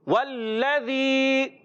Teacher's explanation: زال کی ادائیگی زا سے نہیں بدلنا چاہیے. زال کلیئر ادا ہونا چاہیے. · جی ہاں پیارے بچوں واو ہونٹوں کی گولائی سے ادا کریں گے. لام مشدد ہے رک کر ادا کریں گے · زال کلیئر ادا ہونا چاہیے. یا مدہ ایک الف کھینچ کر ادا کریں